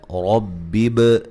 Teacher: را کو موٹا ادا کریں گے، با پہ قلقلہ کریں گے